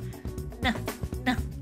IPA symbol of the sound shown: n